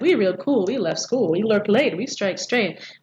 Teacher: all these syllables are stressed, except for arguably the first we